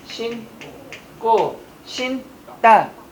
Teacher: 어간이 니은으로 시작했으니까 뒤에 오는 예사소리는 무슨 소리로 바뀐다? 된 소리로 바뀌더라. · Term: 된 소리 현상